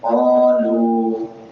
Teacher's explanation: الف مدہ ہے، واو مدہ ہے، دونوں لمبے ہوں گے